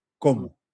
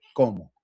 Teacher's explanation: It's just a rise in intonation to let us know es una pregunta.